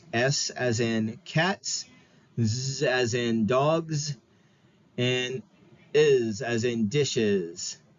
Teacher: the English plural morpheme for the plural s has three different phonetic forms S as in cats Z as in dogs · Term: allomorphs